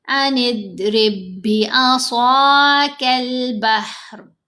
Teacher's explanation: یہ جو ساکن با ہے یہ پڑھا نہیں گیا، ہم نے را کو اس مشدد با سے ملانا ہے، غنہ نہیں کرنا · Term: ادغام مثلین